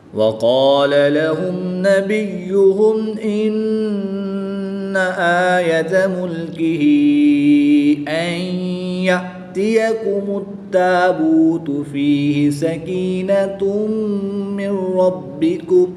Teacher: نون مشدد میں ہمیشہ غنہ ہوتا ہے تو یہاں پر غنہ کر کے پڑھیں گے